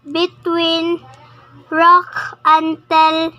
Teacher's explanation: she omitted the s sound of rocks